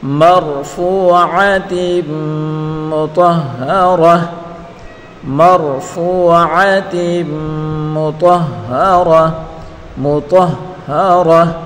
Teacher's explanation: وقف کریں گے تو اس تا گول تا کو ہا ساکن سے بدل کر پڑھیں گے